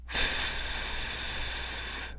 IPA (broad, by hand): θ